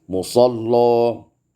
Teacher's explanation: takhlidul lam wal waslan, ditebalkan lam ketika wasal